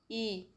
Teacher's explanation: तो अग्र संवृत में आती है इ